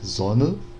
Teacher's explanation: esse E, quando ele não é a sílaba principal, não é a sílaba mais forte da palavra, a gente praticamente ou não pronuncia, ou pronuncia muito fraco, fraco, como ã, né? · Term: schwa